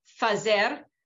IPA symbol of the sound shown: f